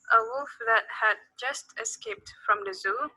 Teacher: bruneians tend to avoid reduced vowels in function words